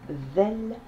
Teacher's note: la lettre Zel, un Z avec la langue qui sort entre les deux dents